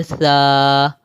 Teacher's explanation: الف خالی سے پہلے زبر ہو تو الف مدہ کہلاتا ہے، اور الف مدہ کو ایک الف کی مقدار کھینچ کر پڑھتے ہیں